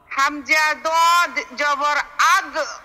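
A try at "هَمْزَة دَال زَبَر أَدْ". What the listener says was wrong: না, কলকলা করবেন না, আউ।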